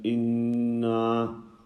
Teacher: By stretching the noon fatha inna, he ended up adding an alif.